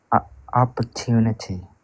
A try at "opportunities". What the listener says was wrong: With S as the end as well. Opportunities.